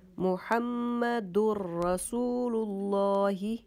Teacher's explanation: Okay, then this tanween sound and noon sound will be pronounced without gunna and should merge the sound of noon tanween into ra or into lam, but no gunna. For example, Muhammadur. · Then Rasulullah. But we should merge the sound of dal into ra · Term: idgham